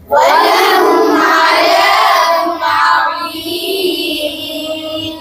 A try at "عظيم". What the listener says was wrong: ولهم عذاب عظيم নাকি عظيم? ইস্তিলার হরফ, তো ইস্তিলার হরফ কি হয়? মোটা করে বলতে হবে, عظيم বলতে হবে।